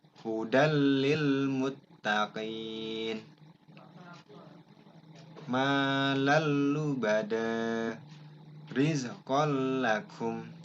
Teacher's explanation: memasukkan atau meleburkan huruf nun mati atau tanwin ke dalam huruf sesudahnya tanpa disertai dengung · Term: idgham bila gunnah